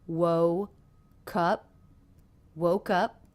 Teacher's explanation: does the word before end in a consonant sound it does it ends in the K consonant sound woke up woke up so to help us link we can almost think of it as beginning the next word